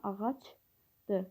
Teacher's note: Ağacdır sözündə sonar samit yoxdur. Çünki tələffüz zamanı r samiti düşür və ümumiyyətlə sözdə sonar samit olmur. · Kar samitin yox, cingiltili samitin, yəni C samitinin öz qarşılığına keçməsi müşahidə olunur.